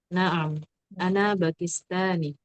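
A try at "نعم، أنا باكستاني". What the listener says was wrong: Nah, Pakistani itu iya-nya tasdid Pakistani. Ini tekan. Naam, ana Pakistani.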